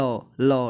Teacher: जो हमारे ऊपर वाले दांत का हिस्सा होता है उसके जस्ट पीछे जब जीभ लगती है तब हम बोल पाते हैं लौ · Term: दंतमूल